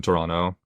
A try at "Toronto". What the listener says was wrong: you didn't pronounce the second T